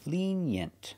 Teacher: Put the stress on the first syllable.